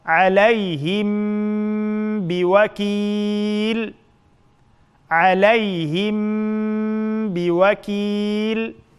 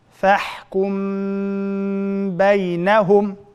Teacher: Sakinlik mimning keyindan ba harf kelsa, sakinlik mimni yushirib, g'unna bilan birga talaffuz qilamiz. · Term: ixfa